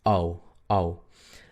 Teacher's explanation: Es un sonido como decir AU, pero la A tiene que ser la A corta. Entonces no es AU, sino es OU, OU, OU, A, U, OU, OU. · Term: la OU y la AU